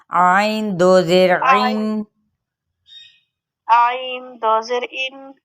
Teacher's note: عین کو وسط حلق سے ادا کریں گے